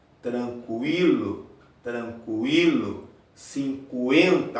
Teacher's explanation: a segunda vogal soa mais fortemente. Então esse é um ditongo crescente.